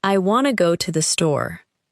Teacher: the speaker is more likely to stress want, go, and store. The two uses of to become much weaker.